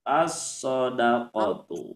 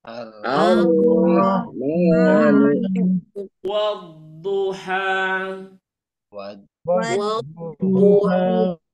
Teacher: Jadi dia itu nanti lamnya tidak terbaca karena ditutupi oleh huruf idghamnya. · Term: alif lam syamsiyah